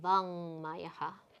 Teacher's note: the ma makes this ka change to its nasal of its varga, which is the guttural mouth position, the first, kantya, and it becomes vang mayaha.